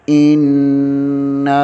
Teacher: ان پڑھیں گے اور نون کے آگے الف مدہ ہے اور الف کے اوپر مد بھی ہے، اسے کھینچیں گے